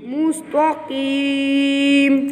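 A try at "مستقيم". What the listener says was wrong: ता है त्वा नहीं, ये मुस्तकीम में ये ता लिखा हुआ है दो नुक्तों वाला। मुस्तकीम काफ मोटा पढ़ना है।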